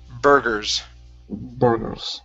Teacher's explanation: the u r and the e r make the same sound in this word so instead of saying boogers it's bur gurus burgers try that